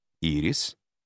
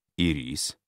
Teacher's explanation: ирис ударение падает на первый слог ирис ударение падает на второй слог